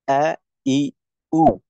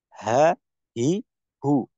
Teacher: তো হামজা আমরা কণ্ঠনালীর শুরু থেকে করব, আর হা হবে কণ্ঠনালী, আহ, হামজাকে আমরা হলকের শুরুর নিচের অংশ থেকে করব, আর হাকে আমরা উচ্চারণ করব হলকের শুরুর উপরের অংশ থেকে